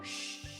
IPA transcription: ʃ